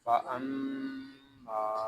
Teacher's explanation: یہاں میم شدد ہے، اس کو غننے کے ساتھ ادا کریں گے، اور یہاں میم کو ہم ایک الف تک کھینچ کر پڑھیں گے کیونکہ یہاں الف مدہ ہو رہا ہے.